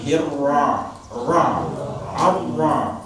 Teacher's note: cuma ra fathah saja, dia mendekati bulat. Tapi tidak bulat, hanya dibuka rahannya. Seolah rahan berbentuk seperti ini.